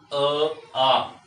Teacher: अ में दंत का कहीं उपयोग भी नहीं है। अधिक सक्रिय कंठ में हो रहा है। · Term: कंठे वर्ण